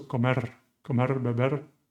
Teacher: some Spanish speakers, some native speakers, do trill this R at the end